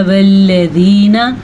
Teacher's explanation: لام کسی صورت میں پر نہیں پڑھا جاتا، لام ہر صورت میں باریک پڑھا جاتا ہے